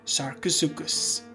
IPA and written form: ˌsɑːrkoʊˈsuːkəs (Sarcosuchus)